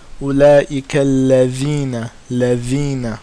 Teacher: the front tip of the tongue touching the sharp part of the top front two teeth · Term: dhal